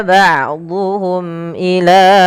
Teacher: mim mati bertemu hamzah harus diperjelas suara mimnya karena dia izhar syafawi